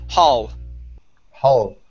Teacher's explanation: And our last one here is hall. Instead of hole with an O sound, it's an ah sound.